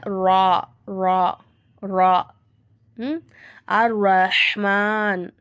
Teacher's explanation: ரா ரா சொல்லும்போது நம்ம நாவ லைட்டா சுழட்டி சொல்லி பாருங்க